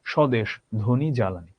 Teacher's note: শব্দের শুরুতে যদি এরকম ব ফলা থাকে, কোনো উচ্চারণ হবে না বয়ের